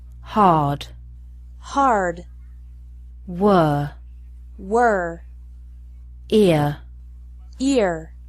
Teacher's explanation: The R is pronounced stronger in American English. Listen to the difference.